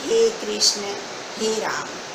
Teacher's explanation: इसको हम पुकारने में प्रयोग करते हैं ईश्वर का, और इसमें 3 मात्राओं के बराबर समय लगता है। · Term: प्लुत स्वर